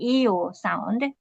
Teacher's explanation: the place of articulation shifts from front to back. So it's like an EO sound. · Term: dark L